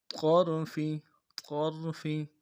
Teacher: قا کو موٹا کریں گے، را کے ساتھ ملانا ہے، را کو موٹا کریں گے، فا کو نرم سے ادا کریں گے.